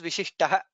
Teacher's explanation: there is no mahaprana in vishishtah.